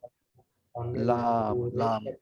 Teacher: জিহ্বার আগা পাশ সামনের উপরে দাঁতের মাড়িতে যেমন লাম লাম তা লাম বললে জিহ্বাটা ফ্ল্যাট হয়ে যায়